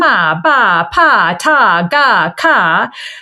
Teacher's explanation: most of which are what we call stop sounds, or ones where there's a complete closure of the tongue against some part of the mouth, which are kind of simpler sounds for babies to make.